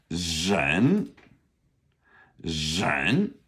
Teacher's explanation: that's our difficult initial R. That would be ren second tone